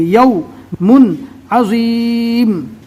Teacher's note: اگر یا کے اوپر پیش آ جائے گا تو یہ واو مدہ ہو جائے گا، اس کو پڑھیں گے یو جب یا کے اوپر پیش آ جاوے، لیکن یہاں پر یائلین ہوگا، نرم آواز سے جلدی پڑھیں گے